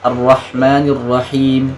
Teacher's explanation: Yang ayat ketiga Ar-Rahman itu H yang pertama bagus, tapi yang keduanya agak ketebelan. Ar-Rahmanir Rahim harus sama-sama. Dua-duanya tipis.